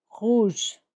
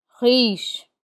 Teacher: R at the beginning or towards the beginning of a word is sounded more strongly. It is very audible